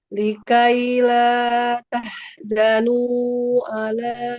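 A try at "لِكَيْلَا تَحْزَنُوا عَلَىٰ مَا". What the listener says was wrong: tahzanu. Nah, jangan jadi jim ya. Zazizu. Likaila tahzanu.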